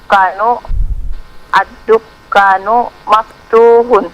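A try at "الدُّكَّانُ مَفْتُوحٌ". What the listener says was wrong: Naam. Kafnya dipanjangkan. Ad-dukkanu.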